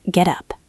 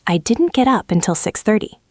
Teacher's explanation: Listen to the linking sound there. Get up. It sounds like one word, get up.